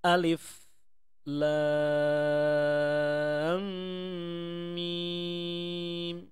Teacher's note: ini dibacanya adalah 6 harakat dan kita potong-potong bacaannya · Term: mad lazim Harfi musyba